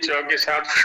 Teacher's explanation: जीभ को नाली सी बनानी है थोड़ी सी, और जहां से च का उच्चारण करते हैं उधर की ओर प्रयत्न होगा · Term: तालव्य का श